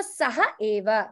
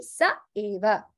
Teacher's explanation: So you will see mostly of that in visargas. When we do our shlokas and all, you'll see the visarga is dropped there. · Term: lopaha